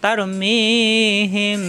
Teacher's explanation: মিম সাকিনের পরে বা আসার কারণে গুণ্য হবে। তারমিহিম, ঠোঁটের ভিজা অংশ থেকে গুণ্য হবে।